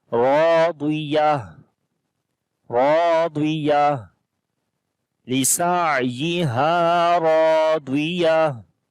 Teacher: Ra we read in heavy sound due to fatha sign on it, and alif also we read in heavy because alif is coming after the heavy letter.